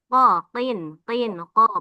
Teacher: Nah kin jangan ada udaranya itu jadi ka biasa. Qo qin qin qo pangkal lidah dalam.